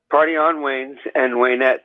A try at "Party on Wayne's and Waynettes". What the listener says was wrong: You gotta work on the accent though. You gotta you can't pronounce R's anymore. Don't pronounce your R's anymore. Everything's just an A at the end. An AH. Potty.